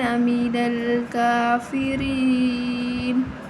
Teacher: یہاں جو را ہے وہ زیر کی وجہ سے باریک پڑھی جائے گی